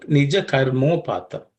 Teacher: Karma and upattam, there's a change because a plus u becomes o. Ma plus u becomes mo. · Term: sandhi